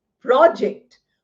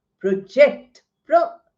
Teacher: Now the two words which are used as noun and verb again there is difference in pronunciation. The noun gets accent on the first syllable. Verb gets accent on the second syllable.